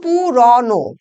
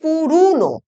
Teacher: তাহলে এবার আমরা দেখছি যে এই যে প্রত্যন্ত পশ্চিম রা উপভাষায় কখনো কখনো ও ধ্বনি উধ্বনিতে পরিণত হচ্ছে · প্রত্যন্ত পশ্চিমা রাঢ়ী উপভাষায় কখনো কখনো ও উচ্চারিত হয় হ্রস্ব উ রূপে